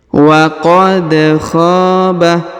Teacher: Huruf da berharokat sukun, maka dipantulkan ya atau diqalqalahkan.